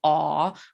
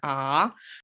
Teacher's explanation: So it's actually pretty neutral, except for a couple of like vowels that are a little strange. We don't have a nice low ah. We kind of have a higher ah.